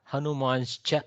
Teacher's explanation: The Sakara goes to Shakara due to Chakara's influence as a Shchutva. Okay, so Hanuman's plus cha, Hanuman's cha, like that it will become.